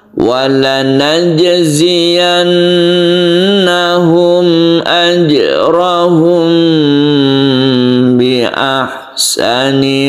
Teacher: ada mim mati bertemu dengan ba yang kita dengungkan. Jadi jangan langsung membacanya, tapi ditahan dulu. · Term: ikhfa syafawi